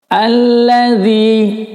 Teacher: Alladzi, di sini ada huruf zal. Ya, ingat penyebutan zal adalah di ujung lidah. Lidahnya dikeluarkan